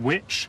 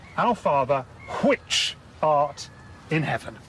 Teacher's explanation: Harriot pronounced the word which as hwich